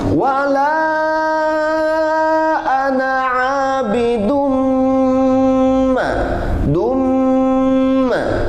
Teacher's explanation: setiap tulisan ana di Al-Quran harus dibaca pendek